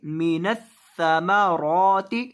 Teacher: سا کو جب آپ پڑھیں گے تو سا کے اندر آپ نے سیٹی پیدا نہیں کرنی. اس کو سیٹی پیدا کیے بغیر پڑھیں گے.